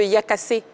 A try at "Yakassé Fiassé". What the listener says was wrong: Vous prononcez bien, mais vous ne terminez pas. Oui, c'est Yakassé Fiassé.